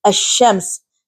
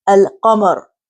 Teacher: And for huruf al-qamariyya, we learned that if alif and lam are prefixed to any one of the qamari letters, the letter lam is pronounced clearly. And for example, in the word al-qamar, so lam here is pronounced alif, lam, qaf.